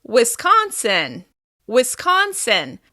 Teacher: We're going to stress the second syllable.